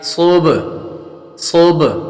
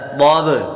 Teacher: صاد با پیش صوب صوب. صاد حروف مستعلیہ میں سے پر کریں گے اور با حروف قلقلہ میں سے ہے. جب حروف قلقلہ ساکن ہوں تو ان میں خوب قلقلہ ظاہر ہوگا.